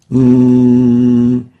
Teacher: the Nun pronounced through the nasal articulation zone